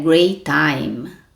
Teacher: aproveito o t do Great E já começa o t do time não fala great time não faça duas vezes Então fale assim